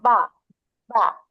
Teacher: বা হচ্ছে ঠোঁটের শুকনো জায়গা থেকে উচ্চারণ হচ্ছে, বা, বা। আর যখন মিম বলছি, মিম, মিম, মিম, ঠোঁটের ভেজা অংশ থেকে উচ্চারণ হবে, ভেজা অংশ থেকে, হ্যাঁ, মানে ঠোঁটের ভিতর দিককার যে ভেজা অংশ, সেখান থেকে উচ্চারণ হবে মিম, মিম।